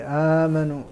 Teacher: ابدلت الهمزه الثانيه مدا للاولى في امنوا ف وهذا هذا الابدال متعين ل متعين لغه للعربي ولجميع القراء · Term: مد البدل